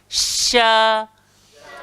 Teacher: Tengah-tengah lidah, langgar langit atas. Sya. So dia tidak perlu kepada bibir. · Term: shin